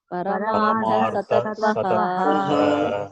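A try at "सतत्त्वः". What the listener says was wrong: Satatvaha, not satachvaha. It is satatvaha, the type. Paramartataha satatvaha.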